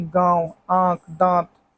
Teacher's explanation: ऐसे स्वरों का उच्चारण नाक और मुंह से होता है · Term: अनुनासिक